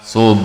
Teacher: di sini juga ada berlaku qalqalah pada huruf ba yang bertanda sakinah.